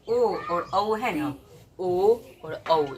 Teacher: ओ और औ, यहाँ पे कंठ और ओठ दोनों का प्रयोग किया जाता है